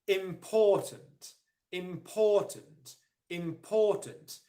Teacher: The second level of stress is on the first syllable, im, and then the unstressed syllable is on the final syllable, tunt.